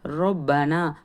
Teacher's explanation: ரா மேலே ஜபர் இருக்கிறதுனால ராவை தஃப்ஹீமாக சொல்லணும், அதாவது வல்லினமாக சொல்லணும். பாவில் தஸ்தீத் இருக்கும்போது அழுத்தம் கொடுக்கணும்.